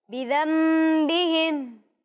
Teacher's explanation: میم نظر نہیں آ رہا آپ کو، لیکن ادائیگی میں میم کی آواز آ رہی ہے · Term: اقلاب